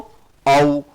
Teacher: कंठ का भी आवाज आ रहा है औ होठ का भी आ रहा है तो दोनों मिल गया तो कंठ भी हो जाएगा यहां पे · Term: कंठ ओस्ट